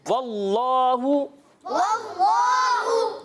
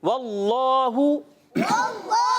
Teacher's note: جلالت کے لام کو پر کر کے پڑھتے ہیں یعنی موٹا کر کے پڑھتے ہیں